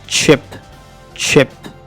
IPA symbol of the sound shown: tʃ